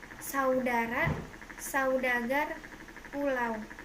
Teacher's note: Diftong naik menutup mundur